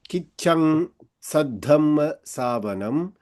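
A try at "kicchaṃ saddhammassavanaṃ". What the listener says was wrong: It was interesting that you pronounced that in a slightly more Sanskrit way, because I think I heard you say savanam with a m, ending with a m, which is also what you would do in Tamil.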